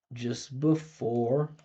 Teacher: We got a schwah here. This is two unstressed syllables in a row.